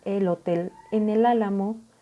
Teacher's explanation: se separa la E, se hace la pausa y la L de él se junta con la HO de hotel y así se va sucesivamente separando por consonante vocal. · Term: encadenamiento de sílabas